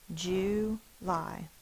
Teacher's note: But July has the oo, which is the long version like in boo.